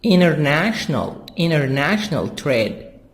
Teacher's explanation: make the T silent because I have N before T, so we say international trade.